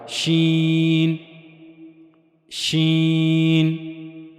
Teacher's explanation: زبان کا درمیانی حصہ منہ کے اوپر والے حصے کی طرف اٹھے گا، لیکن اس سے جا کر ملے گا نہیں